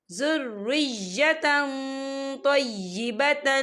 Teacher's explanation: تنوین کی آواز کو ناک میں چھپائیں گے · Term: اقفا